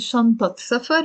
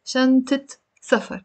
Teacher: The moment I come and I pronounce the تمربوطة here, the fatha becomes a kasra.